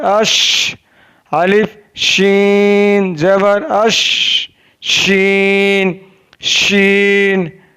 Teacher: शीन ज़बान के दरमियान और तालु के दरमियान से अदा होता है।